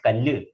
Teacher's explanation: when we write kallu, there is a doubling of the L sound in Malayalam, whereas there is no such doubling sound of consonants in the English language.